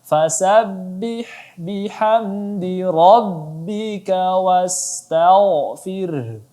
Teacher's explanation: ra tebal maka dibaca tebal lagi karena dia berbaris fathah